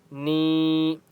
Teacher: نون کے اوپر چھوٹی مد ہے، 3 سے 4 الف کی مقدار کھینچ کر پڑھیں گے